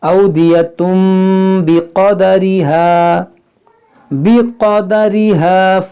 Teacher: یہاں پر دیکھیں تنوین کے بعد با ہے تو اس لیے یہاں پر میم ہے، تو یہاں پر اقلاب ہوگا